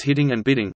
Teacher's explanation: the same flap sound may be heard in the words hitting and bidding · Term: alveolar flap